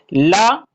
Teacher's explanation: ला आपका ये पार्श्विक है, क्योंकि ला के उच्चारण में मुख जिह्वा जब इस प्रकार से बन जाती है कि आधी प्राणवायु दाहिनी तरफ से, आधी प्राणवायु बाईं तरफ से निकलती है। पार्श्विक का शाब्दिक अर्थ होता है अगल बगल से, इधर और उधर से जो प्राणवायु निकलती है उसे पार्श्विक वर्ण कहा जाता है।